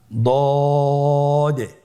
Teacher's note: আলহামদুলিল্লাহ, দদ হরফটিও মোটা হরফ, মোটা করে উচ্চারণ করতে হবে। দদের মাখরাজ জিহ্বার গোড়ার কিনারা সামনের উপরের 2 দাঁতের গোড়ার সঙ্গে লাগিয়ে উচ্চারিত হয়।